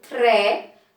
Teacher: quando eu falo tre, o T e o R são pronunciados de uma só vez, são pronunciados juntos